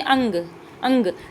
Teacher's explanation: नासिका से उच्चारित ध्वनि है, मतलब नाक से उच्चारित होने वाली ध्वनि है अनुस्वार। जैसे कि आप बोलेंगे अंग, अंग, तो क्या है आपके मुंह से ज़्यादा नाक से आवाज़ निकलती हुई आपको फील होगी।